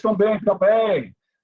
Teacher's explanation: Percebam que saiu pelo nariz, a pronúncia do EN. Então, ditongo decrescente nasal.